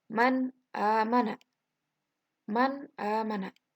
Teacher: Nun matinya harus dibaca jelas. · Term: idhar